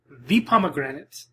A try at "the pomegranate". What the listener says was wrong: It's not granite. It's not granite.